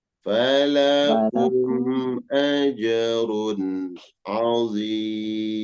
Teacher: Ya, run ada tanwin. Iya, Setelahnya huruf ain, maka tanwin dibaca jelas.